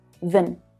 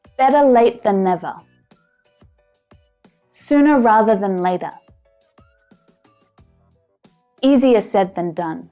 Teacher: It was reduced. It was short and low in pitch. It's an unstressed word.